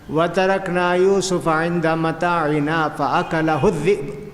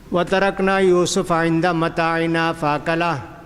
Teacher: اکلہ کے پاس رکنا نہیں، ملا کر پڑھنا اکلہ الذئب